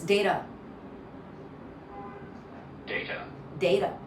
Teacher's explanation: Data. So your t in the American way, it's a little less pronounced, so it becomes more like a subtle d